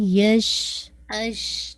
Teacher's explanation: شین ہے تفشی ہے زبان پھیلے گی